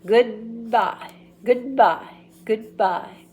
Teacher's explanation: keep the D in position until the B is ready